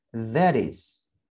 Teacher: Karena suara t diapit oleh suara vokal e dan i, maka suara t pada kata that bisa kita rubah menjadi d, sehingga pelafalannya menjadi that is.